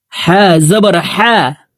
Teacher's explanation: হা হরফ হলকের মধ্যখান থেকে উচ্চারণ করে পড়তে হবে।